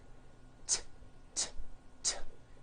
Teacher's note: it's unvoiced. Your vocal cords are not vibrating.